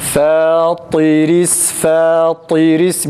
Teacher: Yanlış, ra'nın ince okunması gerekir değil mi?